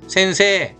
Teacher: 센세이라고 읽기 쉬운데 세가 에 발음 나잖아요. 에단 뒤에 이는 길게 빼줍니다. 세 발음을 센세 이렇게 읽잖아요. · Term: 장음